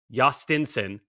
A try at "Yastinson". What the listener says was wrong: Don't you pronounce the J?